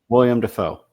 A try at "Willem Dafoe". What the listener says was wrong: Willem. Everyone says William. It's Willem.